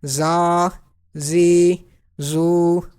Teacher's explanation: So za will be pronounced with whistle